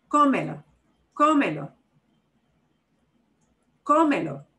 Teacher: You would think from the way it is written that you would punch the me, but we don't. The way we pronounce that word, we punch the O.